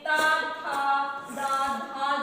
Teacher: त, थ, द, ध चार वर्ण जो है हमारा जीभ और दांत से टच होके हो रहा है ना?